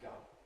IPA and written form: gʌm (gum)